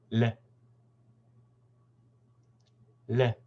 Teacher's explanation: With this phoneme, what happens is that the tongue moves forward and up and briefly touches the top of the mouth, just above the top teeth there. And then it comes down.